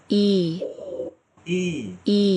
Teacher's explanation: আবার আসি এখানে, E, ই E, লম্বা, একটু E, আমি বলছিলাম লম্বা হবে, একটু টেনে পড়ার মতো। অ্যারাবিক লেটারে আমরা সাধারণত একালিফ টেনে পড়ার যে বিষয়টা, সেরকম একটু টেনে, যদি হাফ সেকেন্ড হয় শর্ট ভাওয়েল, এটা 1 সেকেন্ড এরকম।